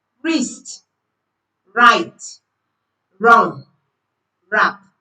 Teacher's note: we are using the R sound without using the W sound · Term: Silent W